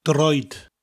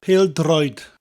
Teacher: Notice droid has got a rolling R.